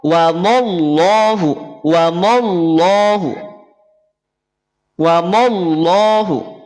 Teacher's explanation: lafaz Allah ketika didahului oleh fathah berarti tebal